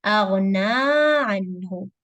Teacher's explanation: Na is 2 counts, مد طبيعي, natural mad, prolong it a little bit.